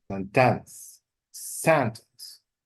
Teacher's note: This is misplacement of the stress. They put the stress on the second syllable rather than the first syllable.